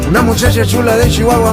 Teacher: es un fonema africado coronal alveolopalatal sordo esto quiere decir que no es ni oclusivo ni fricativo sino